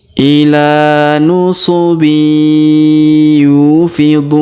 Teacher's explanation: huruf du kita panjangkan 2, 4 atau 6 harokat karena di depan huruf du terdapat waw sukun sebelum huruf pemberhentian, dan huruf pemberhentian huruf na kita sukunkan atau kita matikan.